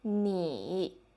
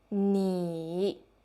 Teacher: You can see that when we are learning our third tone, we have 2 beats. First beat falling down, and then the second beat going up a little bit